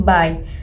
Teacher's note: You should feel your mouth open wider for the A and close toward the E.